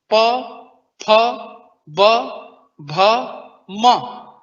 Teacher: दोनों ओठ आपस में चिपक जाएंगे। प, ओठ बंद हो गया। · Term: ओष्ठव्य